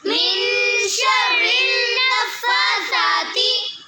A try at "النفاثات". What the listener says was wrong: بیٹے کھڑی زبر کو لمبا کرنا ہے، نفاثات،